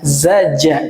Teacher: Karena biasa orang Sunda ya mungkin, jadi pengucapan huruf zanya ini lebih sering diucapkan dengan huruf ja, za, ja gitu.